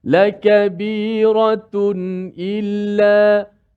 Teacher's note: jelaskan suara nun mati pada tanwin itu tanpa boleh dipanjangkan gunnah, dan berhati-hati supaya jelas menyebut huruf hamzah yang selepas itu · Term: izhar halqi